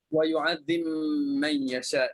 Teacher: Bari mutajanisain ya. Masukkan ba dalam mim kerana ba dengan mim itu sejenis pada makhraj. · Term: idgham mutajanisain